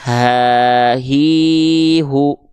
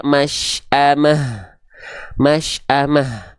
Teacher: membuka sehingga keluar nafas Ha u gitu teman-teman sekalian ya oke huruf ha besar dia punya sifat hams mengalir nafas dengan karakteristik biasa ya enggak perlu berbisik Ya enggak perlu ee ada dengkuran dengkurannya